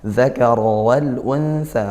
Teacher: Kemudian zal ya, jadi bukan dal, za ujung lidah ke gigi seri atas